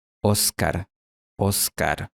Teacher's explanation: poniendo la lámina de la lengua contra la zona alveolar, o sea, la parte interior de las encías superiores, dejando un espacio muy pequeño para el paso del aire. Cuando el aire pasa, se produce fricción. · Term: fricativa